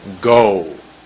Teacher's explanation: when you say go, there's a W at the end of that word.